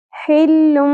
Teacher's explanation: ہا کو وسط حلق سے ادا کرنا ہے